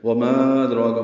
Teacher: وما ادراک، ما مد منفصل ہے الف مدہ کے بعد حمزہ آنے کی وجہ سے، ادراک میں دال ساکن پہ قلقلہ ہے